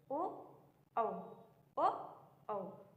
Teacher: ओ औ किस प्रकार के वर्ण हैं, जिनका उच्चारण हम कंठ, इसमें क्या होता है? हमारे कंठ की भी सहायता होती है और हमारे ओठों की भी सहायता होती है।